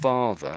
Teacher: the ER on the end is the schwa sound